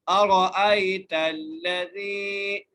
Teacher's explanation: لام کو موٹا نہیں کریں گے